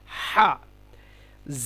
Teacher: হা হলকের মধ্য হতে আওয়াজকে চাপ দিয়ে উচ্চারণ করতে হবে